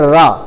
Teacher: तो आपको लगेगा जीभ पहले इकट्ठी हुई और उसके बाद कुछ आगे की ओर लुढ़कती हुई सी आ रही है